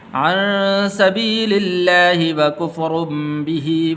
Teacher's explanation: ہا کے نیچے زیر ہے تو اس ہا کو لمبا نہیں کرنا